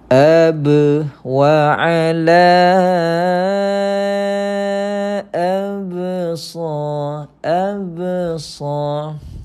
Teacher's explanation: lantunan kecil pada huruf ba seakan-akan Tuan Puan kita tambahkan padanya huruf e